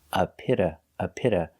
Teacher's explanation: the t is between vowels so it's pronounced with a d a fast d